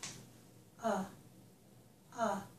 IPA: ə